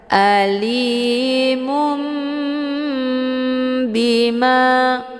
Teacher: hukum bacaan iqlab dibacanya sambil didengungkan